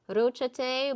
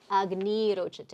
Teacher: the first ra that was from the sa becoming ra is lost, and the preceding vowel, if short, is lengthened.